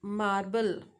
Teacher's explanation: R changed to L to avoid repeating the liquid sound. Sound is L.